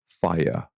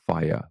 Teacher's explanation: fire with no R, fire, like an English person would